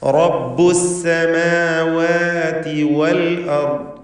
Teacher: ഇതിൽ തുടക്കത്തിലുള്ള റാഇന് തഫ്ഖീം കൊടുക്കണം. വൽ അർദി റാഇനും ദ്വാദിനും തഫ്ഖീം. ദ്വാദിന് കസ്റായതുകൊണ്ട് കുറഞ്ഞ തഫ്ഖീം, മറ്റക്ഷരങ്ങൾക്ക് തർക്കീഖ്.